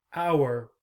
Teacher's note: When you hear this word, you don't hear the H. You only hear our.